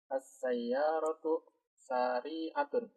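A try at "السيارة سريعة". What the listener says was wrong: Sa-nya pendek ya. Sa-nya bukan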